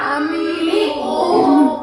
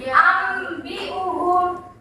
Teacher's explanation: iklab itu dia mengganti nun dengan mim. Jadi dibacanya ambiuhum.